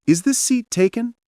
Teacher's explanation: When you ask, "Is this seat taken?" Your voice should rise slightly at the end. It's what makes it sound like a genuine question.